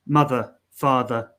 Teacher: it's the most neutral sound vowel sound you're not really opening your mouth you're not closing your mouth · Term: schwa sound